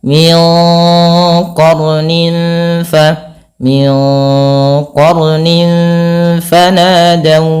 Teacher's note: Maka cara membacanya samarkan tanwinnya kepada huruf fa. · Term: ikhfa